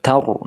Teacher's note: karena didahului oleh fathah dari huruf ta, maka roh sukunnya dibaca tebal. Tar, ya bibirnya ngumpul.